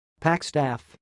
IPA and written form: pækstæf (packstaff)